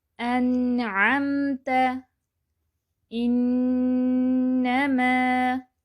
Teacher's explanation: درمیانی کیفیت سے ہم اسے پڑھیں گے، نہ آواز پوری بند نہ پوری جاری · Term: نون ساکن